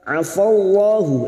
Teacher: lam jalalah yang didahului fathah kita baca tafkim. Afallahu mim yang bertasdid gunnah musyaddadah kita dengungkan selama 3 harakat.